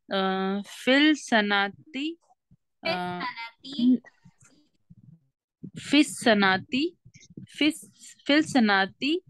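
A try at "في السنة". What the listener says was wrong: don't stretch the sana fis sanati dani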